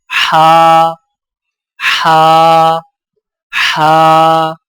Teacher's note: حلق سے رگڑ کھاتی آواز، ادائیگی کے وقت زبان کی جڑ کو حلق کی طرف مضبوطی سے دباتے ہوئے ادا کریں